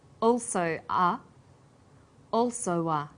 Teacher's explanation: This is linking type 2. Vowel plus w plus vowel.